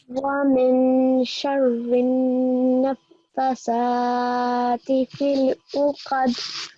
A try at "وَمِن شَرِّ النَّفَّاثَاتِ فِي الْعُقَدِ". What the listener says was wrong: Okay, there was a 2-second timing here which you didn't do, but we will leave that for now.